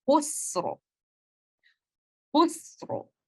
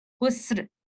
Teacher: खौ को तफखीम के साथ पढ़ेंगे, रॉ को तफखीम के साथ पढ़ेंगे लेकिन सीन को नहीं